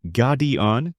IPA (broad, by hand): ˈɡɑːdiən